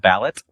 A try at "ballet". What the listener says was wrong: no. not. The T, much like we wish you were, is silent.